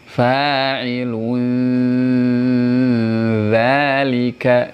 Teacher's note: Dza itu kan ujung lidah bertemu dengan gigi seri.